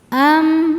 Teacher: Di sini ada hukum tajwid namanya izhar syafawi. Sebab ada mim sukun menghadapi huruf selain mim dan ba yaitu huruf lam. Cara bacanya mim sukun dibaca dengan jelas.